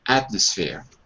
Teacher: To be honest, when I say it quickly, I just drop the M completely.